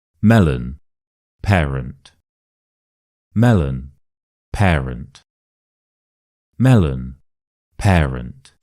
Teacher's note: we stress the me in melon and pair in parent. So the other parts of the words are schwas, right? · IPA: /ə/